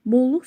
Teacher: Bolluq, bolluq sözündə o, u saiti var, qalındır, dodaqlanandır.